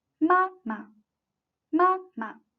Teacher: the second should be pronounced shorter and lighter than the first one.